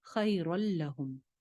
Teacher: را کی ایک زبر کو لام کے ساتھ جوائن کر دیں گے، نون کی آواز بالکل ختم ہو جائے گی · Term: ادغام